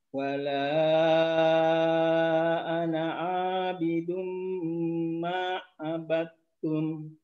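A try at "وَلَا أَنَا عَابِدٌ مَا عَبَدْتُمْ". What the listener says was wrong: Iya, bagus.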